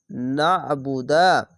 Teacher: আইনটিকে গলা চিপে এবং মোটা করে পড়বেন